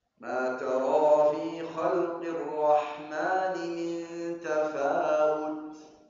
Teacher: Jangan banyak waktu bacanya tafawut. Kemudian harus menjelaskan ta yang terakhir. Tafawut ada hams.